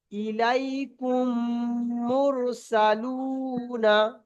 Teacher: প্রথম মিমকে দ্বিতীয় মিমের সঙ্গে মিলিয়ে গুণনা সহ পড়তে হবে। একে ঈদগমের স্বাভাবিক বলে।